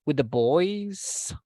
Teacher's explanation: because we are asking, and it is just a question, we need to raise the intonation at the end